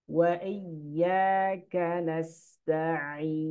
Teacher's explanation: huruf sin. Hati-hati ada sifat sofirnya, mendesisnya.